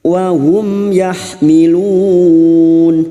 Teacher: Mim sukun dibaca jelas tanpa mendengung. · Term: idhar safawi